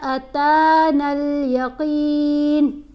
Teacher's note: اس میں تا, یہاں پر حتیٰ پڑھتے ہوئے تا کو 3 الف جتنا لمبا کرنا ہے اور یہاں پر تا کو 1 الف جتنا لمبا کرنا ہے